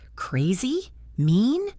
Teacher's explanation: The intonation usually goes uppy at the end.